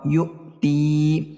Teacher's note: یو میں حمزہ ساکنہ ہے تو پڑھنے میں جھٹکا ہوگا، تی میں یا مدہ ہوگا، یو تی۔